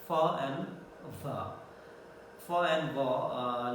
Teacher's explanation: the place is labiodental because the lower lip comes in contact with the upper teeth. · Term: labiodental-fricatives